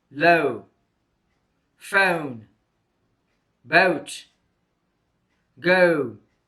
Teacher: O is a diphthong made by the combination of a and u. The mouth is made open. The tongue position is at the back side of the mouth.